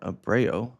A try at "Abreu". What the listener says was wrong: You said you gave it an O at the end.